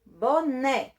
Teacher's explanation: O né eu falo mais forte do que o bó. Então, a minha sílaba tônica, nesse caso aqui, é a sílaba né.